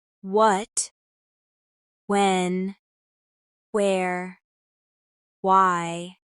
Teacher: In English, wah-h in words like what, when, where, why, often has a slight puff of air at the start